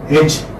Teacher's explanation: front, unrounded vowel between half closed and half open